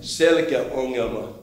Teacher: you see that there's a front vowel and a back vowel at the boundary